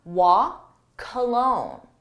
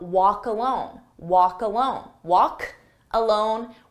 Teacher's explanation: I said walk alone but again there's that c sound so I take that k sound and I put it on the next word and it becomes W cologne but cologne sounds a lot like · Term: linking